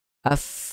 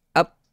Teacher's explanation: Contohnya sifat hams, af, ada angin di situ. Kalau tak ada angin jadi tak up.